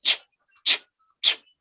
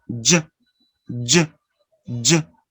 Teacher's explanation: The first sound is voiceless. Ch, ch, ch. The second sound is voiced with vibration. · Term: affricate sounds